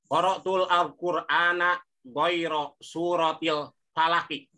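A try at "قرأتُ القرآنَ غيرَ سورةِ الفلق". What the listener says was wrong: langsung aja. Jangan qara'tul al-Qur'an, jangan. Langsung aja.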